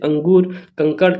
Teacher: तो अनुस्वार की ध्वनि नाक से निकलती है।